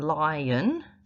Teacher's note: So where in lion, lie will be quite a big drop of your jaw, and the will be a much smaller drop of your jaw. So there will be two drops for the two syllables, but the second one, the unstressed syllable, will be a much smaller drop.